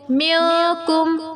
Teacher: نون کا پورا مخرج نہیں پڑھا جائے گا، جیسے نون ان، زبان اوپر لگتی ہے ان میں تو پورا نہیں پڑھا جائے گا نون، بلکہ آدھا چھپا کے پڑھا جائے گا ۔ میم نون زیر میو، کاف میم پیش کم، میو کم، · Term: اخفا